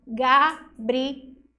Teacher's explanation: Porque esse L, quando tá sozinho, ó, não tem nenhuma vogal depois dele. Ele tem o som de U.